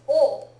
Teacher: which is very important this is often spelled with a W it's rarely pronounced with the w it's generally pronounced o but it is the particle o this is one of the